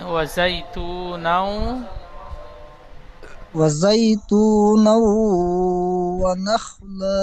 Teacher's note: হ্যাঁ, ইউমিনের 4টি অক্ষরের মধ্যে থেকে ও এসেছে, তাই তানবিনকে একালি পরিমাণ গণনা করে পড়তে হবে। একে ঈদগামে নাকিস বলে।